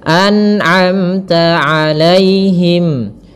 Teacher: Nah, tidak boleh memantul, tapi an'amta. Kemudian pada lafal amta ada mim mati bertemu ta, izhar syafawi, jelas suara mimnya